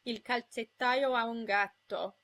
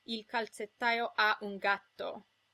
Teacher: In Italian, you want to be careful not to separate these with glottal stops. One vowel just flows into the next, as in il calzettaio ha un gatto, not il calzettaio ha un gatto.